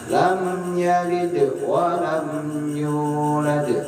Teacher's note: Kebanyakan biasanya bacanya lamnya ditahan terlalu lama.